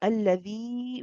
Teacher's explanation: If we are pronouncing the next word ahsan, then we prolong this mud alladhi. We hold it for 4 or 5 counts. Okay, this is what we call mad jaiz munfasil.